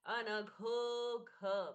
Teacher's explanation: घ महाप्राण, अर्थ ये है कि ये गणेश जी वाला ग नहीं है, घ घर वाला घोड़ा, तो घ।